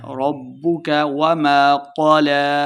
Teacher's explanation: ربك، با مشدد ہے، را کو با کے ساتھ ملانا ہے۔ ربک وما قلى، قاف کو موٹا پڑھیں گے۔